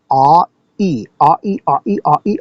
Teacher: Now, the actual diphthong is ah followed by e, and we can prove this to ourselves. You just say ah, do a glottal stop, and then the e sound.